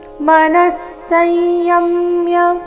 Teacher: ತೆ ದೀರ್ಘ ಬಂದು ನಂತರ ಸೌಮ್ಯ ಆಘಾತ ಬ್ರಹ್ಮಚಾರಿ ವ್ರತೆ ಸ್ಥಿತಹ ಮನಸ್ಸय ಮನಸ್ಸಯಮ್ಯ ವಿಸರ್ಗದ ಉಚ್ಚಾರಣೆ ಇಲ್ಲಿ ಅರ್ಧ ಸ ರೀತಿ